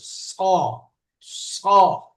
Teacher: বাকি সদের সময় জিহ্বাটা একটু সরু করে একটু খাড়া করে দিলেই মোটা উচ্চারণ হবে